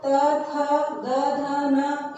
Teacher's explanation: त वर्ग त, थ, द, ध, न, इनका उच्चारण स्थान क्या है? दांत।